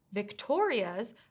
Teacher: the stress needs to be on the second syllable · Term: word stress